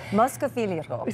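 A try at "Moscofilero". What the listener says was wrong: There we go.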